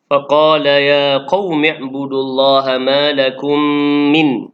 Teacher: فقال يا قوم اعبدوا الله ما لكم من mim mati bertemu dengan mim, hukum tajwidnya adalah idgham mislain. Idgham mislain dan bacaan dia dengung sekadar 2 harakat.